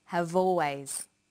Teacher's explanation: in conversation we link the final consonant sound V with the initial vow sound o have always crocodiles are crocodiles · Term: linking